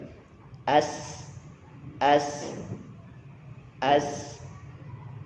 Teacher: Tadi sin itu tengah-tengah antara ujung gigi atas ujung gigi di bawah. Sifatnya adalah hamas, mengalir atau berdesis atau mengeluarkan angin. Juga rokhawah, mengalir.